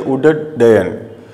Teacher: त का मेल ड या ढ से होने पर ड डमरू का बनता है